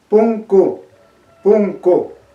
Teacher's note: la primera U es más cerrada. En cambio, la última U, la U final, suena un poquito más abierto, se relaja un poquito más. Entonces suena punku, punku.